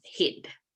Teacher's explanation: And so this vowel, which was a long vowel in Old English, now became a short vowel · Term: vowel shortening